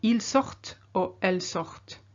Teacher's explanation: because you've got the ENT, you have to say the final T of the stem sort, so sort. Now in the third group belong only OIR verbs, such as recevoir, which means to receive.